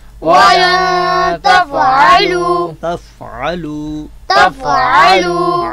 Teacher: عین کو اپنے مخرج سے ادا کریں گے وسط حلق, یعنی حلق کے درمیان سے. اگر ہم حلق کے درمیان سے ادا نہیں کرتے تو یہ حمزہ سے بدل جائے گا اور یوں حرف حرف سے بدل جائے گا, اور حرف حرف سے جب بدلتا ہے تو یہ کس غلطی میں شمار ہوتا ہے؟